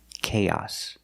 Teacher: The second vowel is the short ah sound like hot and stop. It's the short O.